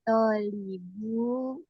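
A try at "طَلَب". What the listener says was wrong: Bukan tolib, tapi tolab. Kalau tolib, toknya panjang ada alifnya. Tolabu.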